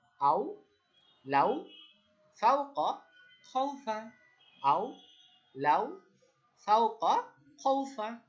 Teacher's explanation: আমরা কিন্তু টানতে পারবো না, আমরা মাদে টান দিয়েছি, কিন্তু লিনে আমরা দ্রুত বলবো।